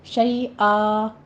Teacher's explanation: شیء میں یا لین ہے اور فتحتین ہے، تو ہم یہاں پہ وقف ابدال کر لیں گے، یہاں پہ الف مدہ میں اس کو بدل دیں گے ، شیئا صرف مد بس کرنی ہے، بہت زیادہ لمبا کھینچنا